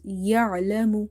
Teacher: Ain is from the middle of the throat